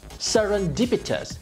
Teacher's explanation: “serendipitous”, 5 syllables, with stress on the third